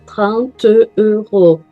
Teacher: É uma palavra, vira uma sílaba só. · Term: enchaînement